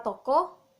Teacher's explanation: bunyi O di tengah, berada di belakang, dan berbentuk bulat